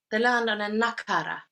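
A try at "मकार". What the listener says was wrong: No, makara. I heard few times some teachers been putting the as a nakara, but Swamiji will not chant with. He would chant with a makara. So before a sibling, it would be a makara, just like Sanskritam, ahimsa.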